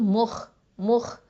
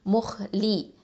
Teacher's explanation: ஹா வந்து heavy letter தஃஹீம் எழுத்து. அது மட்டும் இல்லாமல் அதனல் ஹல்க்கு மேல் தொண்டை எழுத்து முஹ் லி.